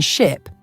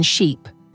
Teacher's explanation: the difference between the short I sound in ship and the long e sound in sheep